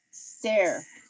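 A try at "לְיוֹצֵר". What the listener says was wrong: So we do pronounce the yud, yo. Good, liotzer. Liotzer. Yes, but it's hard to say liotzer. So it comes out more like liotzer.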